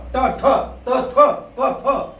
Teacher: याला अघोष व्यंजन म्हणतात कारण त्यांच्यामध्ये घोष म्हणजे काय नाद ताल सूरलय नसते